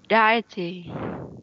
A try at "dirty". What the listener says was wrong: Không, từ này đọc là âm ơ, đọc là dirty. Dirty.